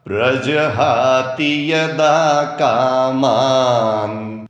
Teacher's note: प्रजहाति में ती की मात्रा छोटी वाली ह्रस्व है